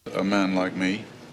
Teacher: Also, his fleece vowel is diphthongal, E. It's not the pure E of posh old RP.